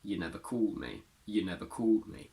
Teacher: The strong form of this pronoun is you with a long oo, which turns into a schwa if it's followed by a consonant.